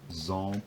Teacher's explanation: the labial articulation seems to appear where there's a labial consonant afterwards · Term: nasal vowel